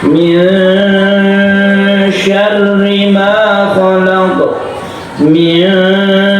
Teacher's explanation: Rongga mulut kita ketika kita membaca nun mati ini sudah bersiap membaca syin. Itu artinya ikhfa. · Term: ikhfa hakiki